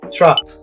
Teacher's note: Try saying truck, but cut short the CK sound.